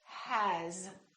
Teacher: it's spelled with an S but the sound is actually Z